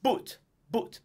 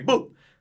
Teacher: I find that it's still a little bit off, because English U is a little bit more rounded than Italian